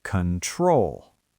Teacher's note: We do not say control with a round O sound at the beginning. The stress is on the second syllable, so the first O becomes a schwa.